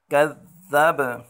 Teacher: با حروف قلقلہ میں سے وقفاً میں با پر قلقلہ کریں گے